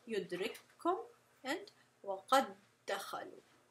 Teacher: It's almost like the first one disappears, the first letter with the sukun disappears, and we're just pronouncing the second letter, which is the same as the first, as if it has a shadda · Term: idgham